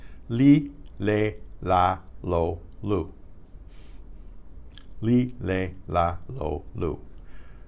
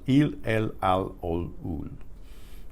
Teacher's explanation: the bulk of the tongue is held higher in the mouth and is pushed more toward the front of the mouth. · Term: Spanish L